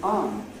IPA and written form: ɑːm (I'm)